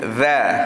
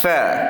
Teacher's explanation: Adapun huruf za, zal ini dia suara kita akan kuat bunyi tu. Adapun huruf tha suara akan rendah kerana sifatnya itu adalah hamas. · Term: huruf zal